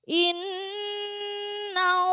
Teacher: di situ mendengung karena gunna nun ditasyid